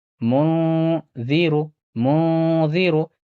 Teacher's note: اور ذال حروف اخفا میں سے ہے، یہاں بھی اخفا ہوگا، نون ساکن کی آواز کو ناک میں چھپا کر پڑھنا ہے